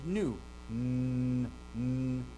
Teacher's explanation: Your tongue hits that ridge back behind your teeth. We call that alveolar ridge, but it hits that ridge, right? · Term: alveolar nasal